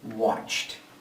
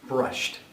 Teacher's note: so here our verb once again in symbol form is watch final sound is ch the ed sounds like a t and we say watched